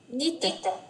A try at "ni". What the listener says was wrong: Ở đây không phải là nít mà n với y thành ni thôi đúng không? Chữ đờ này có nhân đôi đâu mà thành nít. Nó chỉ là ni.